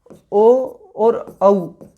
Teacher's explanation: ओ और औ इन दोनों का जो उच्चारण स्थान है वो है कंठ ओष्ठ, तो इन दोनों का उच्चारण स्थान आ गया कंठोष्ठ।